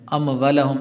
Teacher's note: تو یہاں پر واو کے آگے الف ہے، تو اموالہم اس کو تھوڑا سا لمبا کرنا ہے